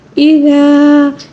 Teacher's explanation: اذا یہاں پر الف مدہ ہے، اس کو 1 الف کے برابر کھینچیں گے